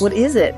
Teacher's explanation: the D becoming a soft R